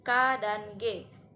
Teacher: konsonan yang terjadi pada pangkal lidah dan plum langit-langit lunak contohnya bunyi k&g ya adalah berdasarkan cara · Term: dorsovelar